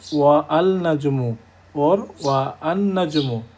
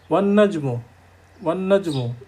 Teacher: alif lam are not pronounced when a word starts with a solar letter and is preceded with another word. যেমন আমরা বলছি ওয়ান নাজমু, ওয়ান নাজমু, অর্থাৎ আলিফ উচ্চারণ হলো না, পরে লামটাও উচ্চারণ হলো না, যেহেতু এটা একটা সূর্যাক্ষর, কাজে আলিফ লাম কোনোটাই উচ্চারণ হবে না।